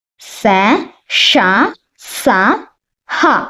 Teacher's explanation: ఊష్మాలు అంటే మనం నోటితో గాలిని బయటికి ఊదుతూ పలికేవి ఊష్మాలు. గాలిని బయటికి ఊదుతూ పలకాలన్నమాట.